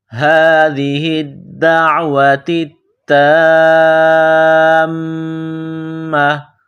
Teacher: جب یہاں رکیں گے تو گول تا کو ہا سے تبدیل کریں گے